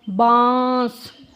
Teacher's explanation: नाक और मुंह दोनों से आवाज़ आई है